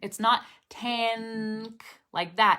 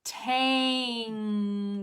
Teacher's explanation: did you know that you could make the n sound with the back of your tongue hitting the roof of your mouth